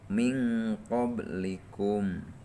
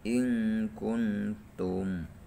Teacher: Patokanana di mana-mana nun paeh atawa tanwin mayunan salah sahijina huruf ihfa abad anu 2 maka macana kudu disamarkeun mahroj nun paeh atawa tanwina sarta nyamarkeunana sing kacida pisan samarna. Contona nun paeh mayunan qaf min qablikum, nun paeh mayunan kaf in kuntum. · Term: ikhfa ab'ad